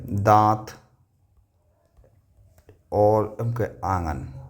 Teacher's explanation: अनुनासिक ऐसे स्वर होते हैं जिनका उच्चारण नाक और मुंह से किया जाता है